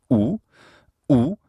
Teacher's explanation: oo is a high back rounded vowel